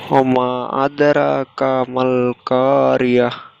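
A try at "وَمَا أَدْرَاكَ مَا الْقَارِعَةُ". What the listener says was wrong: ওয়ামা আরো টান হবে, আরেকবার পড়েন।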